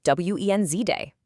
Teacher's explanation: For Wednesday, just ignore that first D entirely. It's just w e n z day.